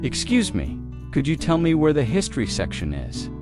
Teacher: In natural speech, could you becomes could ya.